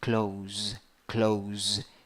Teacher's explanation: one syllable the vowel is o with a hat pronunciation o the word when you write it finishes in s but when you pronounce it finishes in z